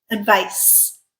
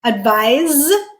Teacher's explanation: Advice, unvoiced. Advise, voiced.